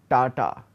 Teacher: I am kind of creating ta by keeping my tongue at the back of the teeth, and I am constricting the flow of air only partially